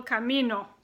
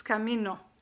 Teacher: O sounds very short and cut off.